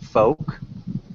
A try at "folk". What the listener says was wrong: yeah